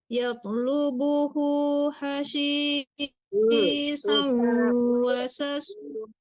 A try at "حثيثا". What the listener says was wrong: jangan hasisa lembut ya di ujung lidah aja. Di ujung lidah aja.